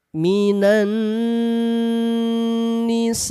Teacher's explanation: Di sini ada tanda alis. Mad berjumpa dengan hamzah dalam kalimat yang sama. Lihat kodenya, panjangkan 4 harokat. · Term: mad wajib muttasil